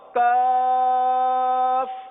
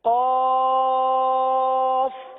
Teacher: کاف باریک ادا ہوتا ہے، قاف پر ادا ہوتا ہے. قاف دو نقطے والا، قرآن والا قاف، اور کاف باریک والا ڈنڈی والا کاف، وہ باریک پڑھا جاتا ہے.